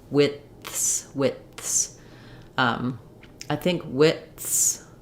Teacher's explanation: you can't drop off that TH there, or it'll sound like more like the word wits.